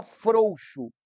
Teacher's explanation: o o é mais forte o u tem uma tonicidade menor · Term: ditongo decrescente